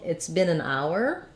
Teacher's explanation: if I'm saying it's been an hour I'm going to use that full hour diphthong